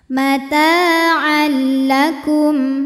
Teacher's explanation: tanwin dileburkan ke lam, tidak disertai dengung, jadi cukup ditekan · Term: idgham bila gunnah